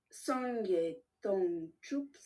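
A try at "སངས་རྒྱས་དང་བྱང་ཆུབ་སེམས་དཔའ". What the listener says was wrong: c'est pas sangye tang chup, c'est sangye tang changchup sempa t'as enlevé le chang. fait directement sangye tang chup.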